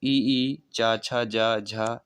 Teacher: तो ई, चा, छा, जा, झा ये आदि का उच्चारण स्थान किससे होता है? तालव्य से।